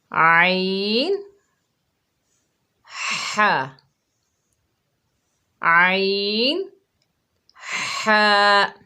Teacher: وسط حلق سے 2 حروف ادا ہوتے ہیں